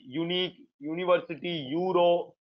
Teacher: you may think it is vowel sound, but the value there is yo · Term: consonant value yo